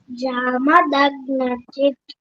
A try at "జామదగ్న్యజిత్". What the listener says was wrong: జామదగ్న్యజిత్ గాకి గాకి నావత్తు యావత్తు రావాలి. జామదగ్న్యజిత్